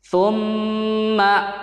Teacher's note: Pastikan pembacaan su atau sa, huruf sa-nya itu benar, itu digigit lidahnya.